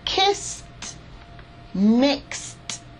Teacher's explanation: I need to do is when I see an S sound when I hear an S sound at the end of the verb I need to pronounce it like T